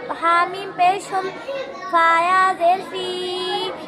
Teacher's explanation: میم ساکن کے بعد فا ہے اس لیے میم کو ظاہر کر پڑھیں گے، اس کو اظہار شفوی کہتے ہیں.